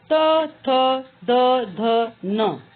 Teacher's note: जब हम इसका उच्चारण करते हैं तो उच्चारण स्थान होता है दंत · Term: त वर्ग